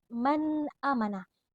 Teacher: Di sini terdapat nun sukun bertemu dengan hamzah atau alif. Jadi cara membacanya harus jelas dan tidak disertai dengan dengung. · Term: izhar